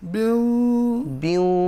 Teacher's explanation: বিউ তো ঠোঁটে থাকলো আওয়াজটা, কিন্তু যেতে হবে তো নাকে, কারণ এটা তো একটা গুন্না